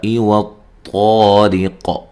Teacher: ریق، را کو باریک پڑھنا ہے، را کے نیچے زیر ہے، اور وقف کی صورت میں قاف پر جو قلقلہ ہے اس کو واضح کرنا ہے، ہلا کر پڑھنا ہے، ٹھیک ہے۔